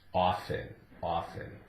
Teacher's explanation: And it's changed somewhat over the years, but now it's accepted as a silent T